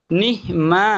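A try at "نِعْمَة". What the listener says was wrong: না, নিহ না, নি না, এটা কি আইন, আইন, এটা আইন, নুন আইন জের। না, নির, নির, ভেতরে ঢোকান, আইন, আইন, টান নেই, মা টান নেই, মা টান নেই, মা টান নেই।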